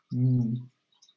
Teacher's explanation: the air comes out of your nose. That's why they're called nasals.